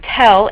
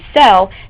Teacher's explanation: So the initial sounds in tell and sell, they don't differ in the place of articulation, but they do differ in how the airflow is disrupted. So t stops the air completely, while s allows the air to continue to flow